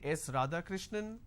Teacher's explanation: now it goes on a rising tone now it doesn't come as an answer it comes as a guess or it comes as a question am I right is this